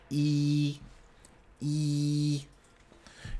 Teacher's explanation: in some vowels your tongue is more towards the front of your mouth for example in E